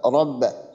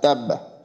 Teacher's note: প্রথম উচ্চারণটা সাকিনের মতো উচ্চারণ আসবে, আর দ্বিতীয় উচ্চারণটা ওই নিজ হরকতের উচ্চারণ আসবে। যেমন রবা জবর রব, বা জবর বা, রব বা। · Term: তাসদিদের উচ্চারণটা